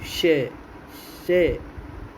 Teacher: श वर्ण का उच्चारण स्थान है तालु